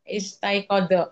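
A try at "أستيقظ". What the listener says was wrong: Bukan, bukan is. Bukan is. istaiqadha yastaiqidhu. bukan. Istaiqadha yastaiqi. Qi. Qi.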